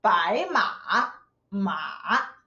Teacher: Third tone. You need to go down, then go up.